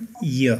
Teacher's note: जिब्राको बीचको भाग र माथिल्लो दाँतको पछाडिको चिल्लो सारो तालुको संलग्नताबाट उच्चारण हुन्छ। त्यसैले यलाई तालव्य वर्ण भनिन्छ।